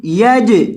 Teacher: جیم کو ہلائیں گے کیونکہ جیم حروف کلکلہ میں سے ہے۔